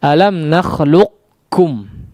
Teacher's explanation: seperti kita akan mentasydidkan huruf qaf tapi pas keluar ternyata huruf kaf ya, pas diucapkan ternyata huruf kaf. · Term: idgham mutaqaribain